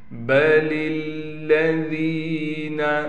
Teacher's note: بل الذین، اسلام کو اسلام کے ساتھ ملائیں گے، لام پر تشدید ہونے کی وجہ سے ٹھہراؤ کیا جائے گا، ذال کو نرم کر کے نکالیں گے یعنی دونوں دانتوں کے درمیان زبان لائیں گے، یا ہونے کی وجہ سے ذال کو ایک الف کی مقدار کھینچیں گے۔